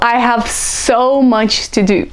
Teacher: So much is emphasized.